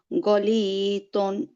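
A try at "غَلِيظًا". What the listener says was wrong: অনেক অনেকটা দয়ের মতো দন। দন মানে স্পষ্ট দ হয়ে যাচ্ছে, একটু জিভটা বের করে এনে দাঁতের সামনে লাগিয়ে বলতে হবে দন দন।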